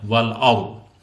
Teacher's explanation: Wal ardi, di sini ada tafhim. Apabila ada roh sukun sebelumnya berharokat fathah, maka dibaca tebal rohnya.